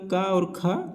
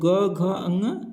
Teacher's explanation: तीसरा, चौथा, पांचवा वर्ण जो होता है सघोष होता है। जैसे क वर्ण का क और ख अघोष है। और ग, घ, ङ सघोष है।